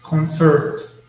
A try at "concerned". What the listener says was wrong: concerned. Concerned. Just a final D sound.